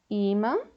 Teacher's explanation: aonde tem esse acento til parte do som sai pelo nariz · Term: som nasal